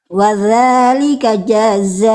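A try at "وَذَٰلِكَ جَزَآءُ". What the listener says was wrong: Ja-nya jangan jadi kepanjangan. Jaza langsung. Wa dzalika jaza.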